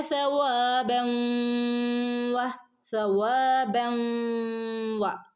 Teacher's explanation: തൻവീനു ശേഷം വൗ വന്നാൽ മണിച്ച് കൂട്ടിച്ചേർത്ത് ഓതണം